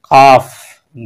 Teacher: পাঁচ নম্বর মাখরজ হলো জিহ্বার গুড়ি সোজা উপরে তালুর সাথে লাগিয়ে কাফ